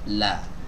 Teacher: La. Bukan la, bukan ujungnya saja, bukan roksul lisannya saja, tapi sisi lidah kanan ataupun kiri ini disertakan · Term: huruf lam